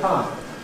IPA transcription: paə